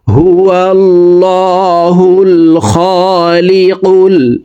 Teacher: আল্লাহ শব্দের আগের হারফে জবর আছে এ কারণে এইলামকে ল বলে পড়ব অর্থাৎ মোটা করে পড়তে হবে